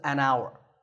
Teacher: the spelling has an H at the start, but that H is silent.